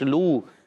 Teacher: لام واو پیش لو، واو مدہ ہوگا تو ایک الف کھینچیں گے